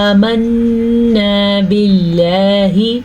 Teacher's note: نون کے اوپر شد ہے تو نون کا غنہ ادا کریں گے. باللہ، لفظ اللہ کو ہم نے باریک پڑھا کیونکہ لفظ اللہ سے پیچھے والے حرف کے نیچے زیر ہے. یاد رکھیں جب اللہ کے لفظ کے پیچھے حرف پہ زبر یا پیش ہوگی تو لفظ اللہ پر یعنی کہ موٹا پڑا جائے گا، اور اگر لفظ اللہ سے پہلے زیر ہوگی تو لفظ اللہ باریک پڑا جائے گا.